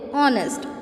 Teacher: ऑनेस्ट is, वो start तो हो रहा है एच से, बट उसको एच हमने साइलेंट किया है और हम बोलते ऑनेस्ट। ओ का साउंड आ रहा है, एच का साउंड नहीं आ रहा है